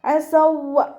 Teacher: ഇദ്ഗാം മുതമാസിലാൻ. സുക്കൂനായ വാവിനെ അടുത്ത വാവിലേക്ക് ലയിപ്പിച്ച് ഓതി കൊടുക്കുക കേട്ടോ. അസൗവ. വാവ് ചരിക്കുമ്പോൾ ചുണ്ടുകളൊന്ന് വട്ടത്തിൽ പിടിച്ചു കൊടുക്കാൻ ശ്രദ്ധിക്കണേ.